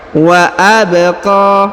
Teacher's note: Huruf ba berharokat sukun, maka kita pantulkan atau kita qalqalahkan.